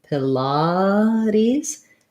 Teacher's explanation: Our first syllable is very short, light I sound, Pilates. And then we make that T into a flap, sounds a little bit more like a D. · So Pilates has kind of unusual pronunciation because it's either a made-up word or it comes from another language. So we have second syllable stress with the ah sound. Our first syllable is very short, light I sound, Pilates.